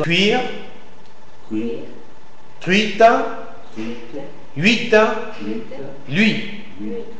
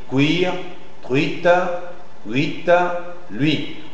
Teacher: C'est la voyelle U que vous devez articuler d'une manière plus faible ou plus vite